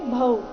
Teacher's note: ನಿಶ್ರೇಯಸಕರಾವುಭೌ ಸಕರಾವುಭೌ ಇಲ್ಲಿ ಸಕರಾವುಭೌ ವ ವ್ಯಂಜನ ವಕ್ಕೆ ಓಕಾರ ಸಕರಾವುಭೌ ಕೊನೆಗೆ ಭೌ ಭ ಮಹಾಪ್ರಾಣ ದೀರ್ಘ ಔಕಾರದೊಂದಿಗೆ